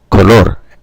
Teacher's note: And the syllables on the first, the intonations on the first syllable, color. Where in Spanish, both the O's are the same sound, O, color, and the syllable at the end is stressed, not the first, like in the word in English.